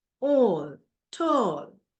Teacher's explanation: back rounded vowel between half closed and half open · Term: o sound